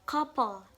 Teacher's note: the syllable is weak when it has a syllabic consonant. For the example like couple, the second syllable is weak.